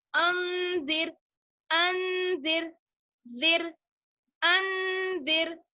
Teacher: रॉ साकिन है और उससे पहले जाल पर जेर आ गया, इसलिए रॉ को बारीक पढ़ा जाएगा